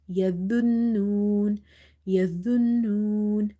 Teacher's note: Okay, so you have to stop the airflow. You have to say yadhunnun without making here a buzzing sound like yazunnun. No, it's yadhunnun, yadhunnun, and this is heavy as well.